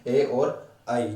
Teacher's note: ए और ऐ जो है वो कहां से बोले जाते हैं बेटा? कंठ और तालु से बोले जाते हैं।